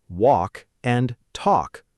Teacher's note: The correct way is simply walk and talk, with a soft, rounded vowel sound and absolutely no L.